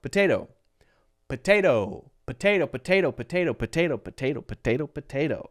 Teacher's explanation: we're changing this second T to a light D and that's what makes it sound so natural